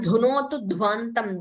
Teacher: the Dha Mahaprana should be heard better